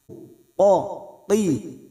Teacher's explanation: Huruf qaf ini huruf isti'la, huruf tebal, maka jangan samakan dengan kaf. Qa, qi. Waqa'atil, waqa'atil, huruf ain yang memiliki sifat tawasud dan jahar.